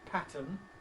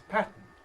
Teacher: I noticed her earlier using the word which she pronounced ‘pattern’ ˈpætən, which I would normally say as ˈpætn̩